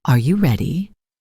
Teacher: Your voice goes up at the end. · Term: Rising intonation